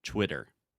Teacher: So I'm making a circle with my mouth and saying Twitter. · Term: W sound